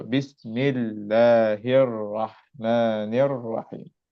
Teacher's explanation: just giving some more time to the ra, because this ra, as you know, it has a shadda in ar-Rahman and ar-Rahim. So both these two ra's with shadda, and also the lam in the word Allah has a shadda.